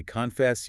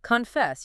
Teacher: You have to glide over the first syllable. It becomes almost a non-sound, a schwa, and hit the second syllable hard.